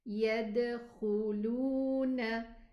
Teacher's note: 2 counts for the mad wow, a sukoon wow with a dhamma before it, 2 counts, and then we have a noon fatha.